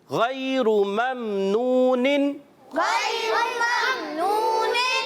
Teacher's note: غین کی ادائیگی پر رکھیں گے، موٹا حرف لین کو نرمی سے ادا کریں. را پر دیکھیں پیش ہے پیارے بچوں، تو اس کو ہم نے موٹا پڑھنا ہے